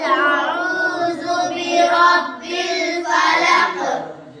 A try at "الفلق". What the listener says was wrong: فلق میں قاف کی آواز آنی چاہیے، فلق۔ فلق میں دیکھو قاف ہے اور قاف پر وقف کی وجہ سے جزم آ گیا، نہیں؟ جب جزم آ جائے حروف قلقلہ میں سے کسی بھی حرف پر تو وہاں کیا ہوتا ہے؟